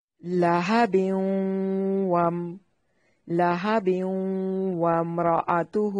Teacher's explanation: لہب لام کو لمبا نہیں کرنا. با پہ وقف کی صورت میں قلقلہ ہوگا. ملانے کی صورت میں ادغام مع الغنہ ہوگا